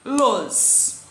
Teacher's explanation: Então, óculos, a sílaba tônica é a antepenúltima.